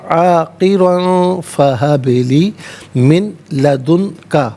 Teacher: با ساکن ہے لیکن حرف قلقلہ ہے تو آواز لوٹتی بھی محسوس ہونی چاہیے · را پر 2 زبر کی تنوین عاقرن میں اسے بھی پر کر کے پڑھا جائے گا۔